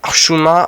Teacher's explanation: à prononcer avec l'H au fond de la gorge comme dans Hamed